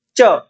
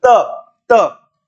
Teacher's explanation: अब जहां आपके च वर्ग में जीवा ने स्पर्श किया, उसे थोड़ा सा नीचे दांतों को स्पर्श करेगी। त त च, च में थोड़ा ऊपर स्पर्श किया, फिर आप त बोलो, त में उसे थोड़ा सा नीचे स्पर्श करेगा, यानी दांतों को स्पर्श करेगी।